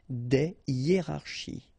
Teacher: you won't have the possibility to make the liaison between your article and your word. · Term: H aspiré